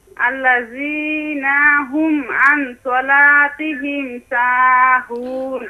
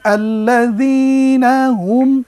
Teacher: আল্লাযীনাতে টান নেই এখানে হরকতের উচ্চারণ তাড়াতাড়ি পড়তে হয় এখানে টেনেছেন আর হুম আং এখানে কিন্তু একটা গুন্না আছে সেই